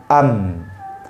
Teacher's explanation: mim tertahan suara dari dua bibir